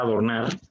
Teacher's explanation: nos damos cuenta que la sílaba que mayor intensidad tiene es nar. O sea, no suena adornar, es adornar. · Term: sílaba tónica